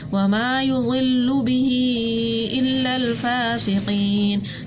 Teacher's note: ٹھیک ہے, یہاں پہ الف مدہ تھا, ایک الف کے برابر کھینچا, پھر یہاں پر دوبارہ سے मद्द मुनफसिल आ रही थी तो हमने 3 अलिफ के बराबर खींचा और फिर ये या मद्द थी 1 अलिफ के बराबर खींच कर पढ़ा।